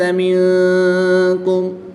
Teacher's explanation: نون ساکن کے بعد یہاں پر کاف حروف اخفا میں سے ہے تو یہاں پر اخفا ہوگا یعنی غنہ زمانی کر کے پڑھیں گے.